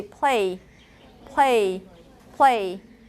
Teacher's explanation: sometimes you can't really hear the segment of L you you you start with the p and then you you kind of Transit into the a